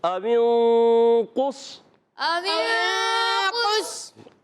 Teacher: قاف کو صاد سے ملانا ہے، قاف بھی موٹا، صاد بھی موٹا